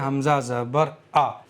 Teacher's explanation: आइन का मखरज है बीच हलक से अदा होता है, आइन, आइन, ठीक है। और हमज़ा का मखरज है शुरू हलक सीने की तरफ